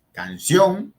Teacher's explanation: lleva la fuerza en la última sílaba, sion, y eso termina en N, lleva tilde. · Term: agudas